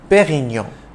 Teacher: pioneer of superior champagne it's a soft d in dom and you don't enunciate the n at the end of perignon but rather pronounce the preceding o nasally